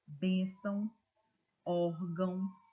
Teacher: a sílaba mais forte é a penúltima sílaba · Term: paroxítonas